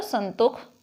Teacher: यहाँ मूर्धन्य स जो है वो ख में भी बदल गया। संतोष उसी तरह संतोख बन गया।